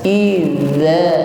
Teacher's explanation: za diucapkan dengan ujung lidah bertemu ujung gigi seri yang bagian atas. Idza, ujung lidahnya sedikit keluar.